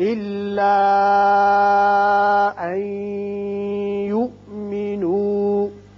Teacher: نون ساکن کے بعد یا آ گیا، یہاں ادغام ہوگا غننے کے ساتھ